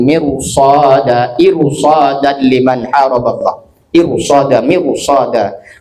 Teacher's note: Walaupun rnya sebelum ra sukun kasrah, tapi setelah ro sukun itu huruf istilla harus dibaca tafhim